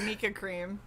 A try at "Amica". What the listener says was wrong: Amica. Amica. You're putting the emphasis on the wrong syllable.